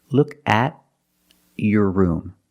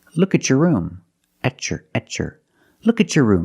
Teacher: when you have a t before a y in two separate words and you link the pronunciation of the two words you will hear the CH sound